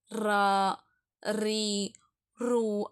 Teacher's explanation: மேல் அண்ணத்துல வந்து ரா சொல்லும் பொழுது அது வந்து படணும்